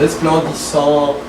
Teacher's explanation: The N and the T, you don't say them